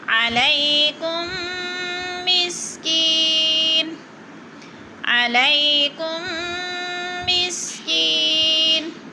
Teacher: کم پہ ادغام، میم ساکن کے بعد میم مشدد ہے تو ہم نے ادغام ہو رہا ہے، سختی سے پڑھیں گے اور غنہ کریں گے، ادغام شفوی۔ علیکم مسکین، مسکی پہ یا مدہ ہے، تھوڑا سا کھینچنا ہے ہم نے، اور نون دو پیش نون کو وقف کی صورت میں ساکن کر دیں گے۔